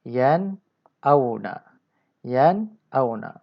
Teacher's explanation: Nun sukun itu yan. Baca secara jelas, nyata. Tak ada dengung dan tak ada panjang beberapa harakat. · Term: izhar nun sukun